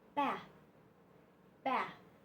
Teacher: th but this th is soft bath bath b a a your tongue is between your teeth and you push out some air softly so